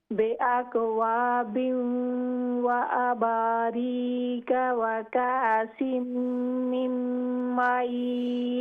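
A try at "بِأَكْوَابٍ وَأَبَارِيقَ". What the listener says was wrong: ہاں جی، آپ کی جو بڑی کاف ہے اور چھوٹی کاف ہے اس میں فرق مجھے محسوس نہیں ہو رہا.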